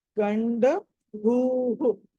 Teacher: Last లో భా అన్నది మహాప్రాణము కాబట్టి ఇది గండ భూహు. తర్వాత విసర్గ కూడా ఉంది కాబట్టి భూహు అని విసర్గ కూడా పలకాలి.